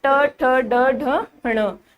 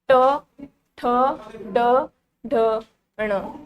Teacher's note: हमारी जीवा तालु के बीच में लग रही है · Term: मूर्धन्य